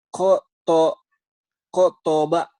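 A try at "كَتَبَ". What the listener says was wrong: jangan diputus-putus ini mah.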